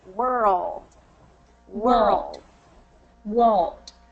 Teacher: good so it's a slight difference between word and world but it's just that drop of the tongue in our mouth to create that dark L